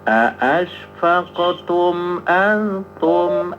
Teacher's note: Jangan ditahan tumnya langsung karena itu izhar ya.